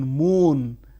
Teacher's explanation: Bilabial, the active articulators are the two lips